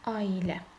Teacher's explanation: Aha, burada səs artımı baş verdi. Yəni A və İ saitinin ortasına Y samiti daxil oldu